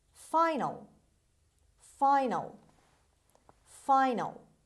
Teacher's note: a in the end of the word before l is pronounced as schwa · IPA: /ˈfaɪnəl:/